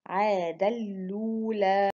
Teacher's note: with idgham of the tanween into the lam, and the vowel on the hamza is transferred to the lam and dropping the hamza